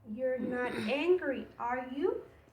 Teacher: You can notice that not angry, we say it a little bit higher, and are you, we use lower pitch. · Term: intonation